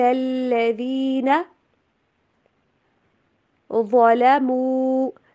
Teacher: جبکہ جو ذال ہے، ذال نا، تو زبان کی نوک کو جو اوپر والے دانت ہیں، دو سامنے والے دانت، ٹھیک ہے، ان سے زبان کی نوک کو تھوڑا سا باہر نکالیں، باہر رکھیں، پھر جا کے ذال ادا ہوگا